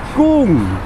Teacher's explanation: mid-class initial consonant, and second tone mark, and that gives us a falling tone